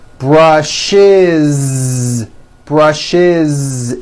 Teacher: brushes it's a voiced ending